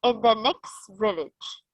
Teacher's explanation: in the next village dropped the ta sound from next · Drop the tah sound from next. Why? Because in English we don't need to say each and every single letter like in Arabic.